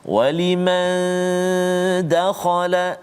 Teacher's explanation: nun mati bertemu dengan dal, dengung dua harakat